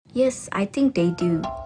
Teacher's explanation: she uses a full rising tone appropriately to indicate that she doesn't really know or is unsure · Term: fall-rising tone